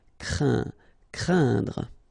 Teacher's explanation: keep in mind that it goes in your nose, so you don't hear any N when I pronounce it, and then C plus R will produce the sound craindre. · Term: nasal